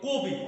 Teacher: তো কবি আমাদের যে শব্দটা, এই শব্দের ভিতরে যদি আমরা বানান অনুসারে উচ্চারণ করতে যাই, তাহলে এটার উচ্চারণ হবে কবি কবি, কিন্তু আমরা মূলত উচ্চারণ করি কবি, অর্থাৎ এখানে ক এর পরে আমরা মূলত উচ্চারণ করছি ও